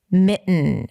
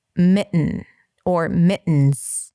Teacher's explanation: it has the nasal T, which means a T sound that goes into an N right away.